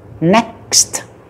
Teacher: cái cuối nó có tới ba âm lận, âm k, âm s và âm t